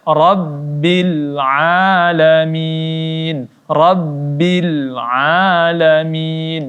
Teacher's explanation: Ya, lamnya tidak boleh kita pantulkan.